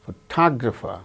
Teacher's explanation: In the case of the second word, photographer, second syllable gains stress.